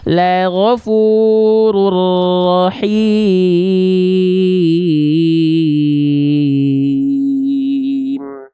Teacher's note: leburkan bunyi UN pada ro